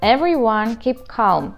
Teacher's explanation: Звук к не имеет никаких особенностей в своем произношении, просто с придыханием.